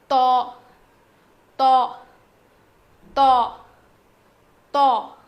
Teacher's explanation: تو تو تو، موٹا پڑھیں گے، اس کا مخرج کیا ہے؟ زبان کی نوک کو سامنے کے دو دانتوں کے جڑ میں لگانے سے ادا ہوتا ہے